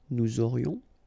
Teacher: final S not pronounced, and then you've got this liaison